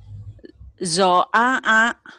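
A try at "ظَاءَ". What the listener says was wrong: Zo-a-a. Kurang sedap tuh ainnya.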